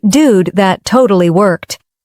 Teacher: Focus on intonation rising at dude and dropping at worked.